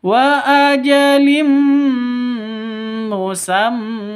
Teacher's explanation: ada tanwin bertemu dengan mim. Cara bacanya masuk ke mim disertai dengung. Idgham bi gunnah.